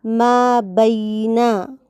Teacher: بینا میں یا کو مجہول پڑھنے سے بچانا ہے